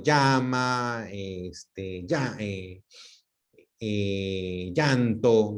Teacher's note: Que es que nosotros, la doble L, perdón, pronunciamos como Y, ese famoso yeísmo